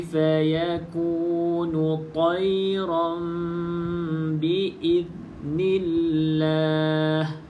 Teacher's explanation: Okay, ada iklab. Nun, bunyi nun tukar kepada bunyi mim. Okay, rapatkan bibir atas bibir bawah. Kemudian za yang sukun ni macam kita sebut tadi, praktiskan untuk ujung lidah tu kita gigit sedikit lah supaya tidak ada lantunan.